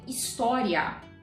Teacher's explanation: Quando você pronuncia esse ditongo, IA, você repara que forte é o A. Então, o I é semivogal.